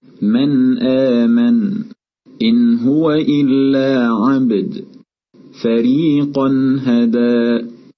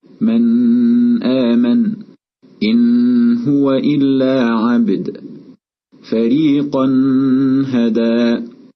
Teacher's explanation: نلاحظ في الأمثلة التي سمعناها أننا أظهرنا النون الساكنة والتنوين، حيث ظل طرف اللسان ملامسا للثة العليا مدة يسيرة بمقدار الحركة تقريبا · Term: الإظهار